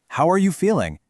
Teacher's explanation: a wh question like how are you feeling actually falls